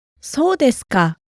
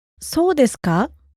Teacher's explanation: Also, note the falling intonation. そ う で す か When said this way, it's really similar to how, oh, is that so?